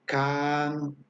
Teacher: jalar el sonido y no sube no baja es parejo así tiene que sonar qué tal y no hace esta variación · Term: vocal larga